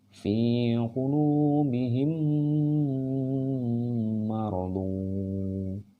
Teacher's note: disini mati menghadapi huruf mim maka diri gitu kan Mimi atau idgham syafawi dan harus ada dengung diantara dua bibir